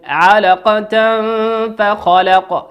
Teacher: تنوين أتى بعده حرف الفاء، والفاء من حروف الإخفاء